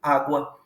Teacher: O U vem antes do A. O U é mais fraco, é mais baixinho, e aí há um crescimento, portanto, ditongo crescente.